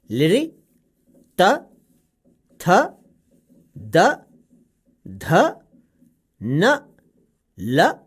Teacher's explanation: लृ, तवर्ग, ल और स दंत्य वर्ण हैं। इनका उच्चारण दंत और जिह्वा के स्पर्श से होता है।